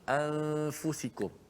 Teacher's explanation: Selepas kita sebut hamzah, a, okey, mulut kita, lidah kita jangan pergi makhraj nun. Yang pergi nun biar kerja hidung saja. Dengung dekat hidung. Daripada a, mulut kita, lidah kita terus berpindah pergi kepada huruf fa. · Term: ikhfa